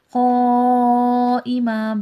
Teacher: بڑا مد ہے، 5 سے 6 الف کی مقدار کے برابر کھینچ کے پڑھا جائے گا